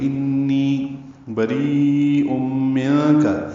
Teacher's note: منک میں اخفا ہے، نون ساکن کے بعد کاف آنے کی وجہ سے · بری میں را باریک ہے، ری یا مدہ، اور اس کے بعد حمزہ آنے کی وجہ سے مد متصل ہے